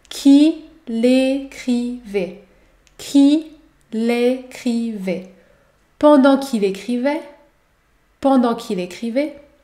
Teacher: Il faut aussi effectuer l'enchaînement entre le pronom il et le verbe écrivait.